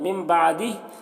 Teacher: नून साकिन के बाद बा है तो नून को मीम से मिलाकर गुन्ना इख्फ़ा के साथ पढ़ेंगे, इसको इक़लाब कहते हैं.